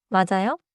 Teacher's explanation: With a fall, it means, “That’s right.”